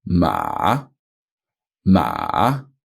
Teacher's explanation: so it goes down ma with a little croak and then back up again ma almost goes back up as high as the first tone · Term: third tone, full third tone